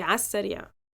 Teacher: omitting the lam and the alif of على